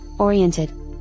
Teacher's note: the t- sound drops off too fast because of the word ending